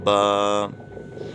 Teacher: الف منہ کے خالی حصے سے، منہ کے خالی حصے سے بحالت مدہ، اور با کا مخرج دونوں ہونٹوں کی اندرونی تری، دونوں ہونٹوں کا جو تر حصہ رہتا ہے وہ دونوں حصے آپس میں ملیں گے تو حرف پڑھا جائے گا